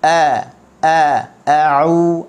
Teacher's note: hamzah kena ambil di halqum bawah. Okey, bersifat dengan jahar. A'u, ain bagi depan, u kena muncung.